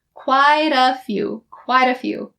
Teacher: the t in quite changes to a d and connects to uh quite a